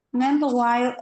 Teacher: the stress is on the first syllable in meanwhile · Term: Stress on the first syllable